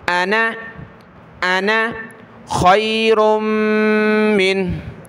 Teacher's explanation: نون کے ساتھ یہ الف نہیں پڑھا جاتا، نون پڑھیں گے صرف